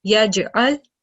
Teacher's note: letter Jim with the sukoon. So it's one of the kalkala letters. And we produce a slight jerking sound